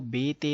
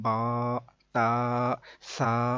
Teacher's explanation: عربی لہجے کے مطابق قرآن پاک کو اگر پڑھیں گے تو وہ بے، تے نہیں بلکہ با، تا، سا ایسے ہوگا